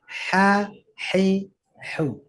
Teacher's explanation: tenggorokan kita ditekan sehingga udara itu deras keluar ya karena sempit sama dengan meniup kalau meniup dengan agak dibuka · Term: huruf ha